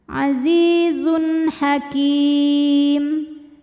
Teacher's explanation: Kemudian ada hukum idhar halqi karena ada tanwin dhammah menghadapi huruf halqi yaitu huruf ha, ya, huruf tenggorokan, maka tanwin dibaca jelas.